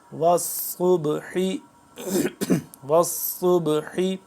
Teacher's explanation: صبح پہ قلقلہ ہو رہا ہے، ہم اس کو با کو ہلا کے پڑھیں گے، قلقلہ کریں گے.